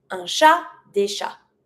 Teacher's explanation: Don't pronounce the T when it's singular, and don't pronounce the TS.